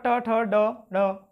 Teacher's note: टा वर्ग के जो होते हैं उन्हें मूर्धा या मूर्धन्य से बोला जाता है।